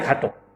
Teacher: এরপর আরেকটা নিয়ম আমি বলছি, সেটা হচ্ছে বিশেষণ পদের শেষে অধ্বনি ওকার দিয়ে লেখা বিধেয়। কিছু কিছু বিশেষণ আছে যেটা শব্দটার শেষে অ থাকে, কিন্তু উচ্চারণটা ও এর মতন করা লাগে, সেক্ষেত্রে আমরা লিখতেই আমরা ও লিখব।